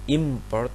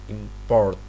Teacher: the noun import and the verb import have exactly the same segments, but the words are distinguished according to which of the syllables are stressed. The noun is import, but the verb is import.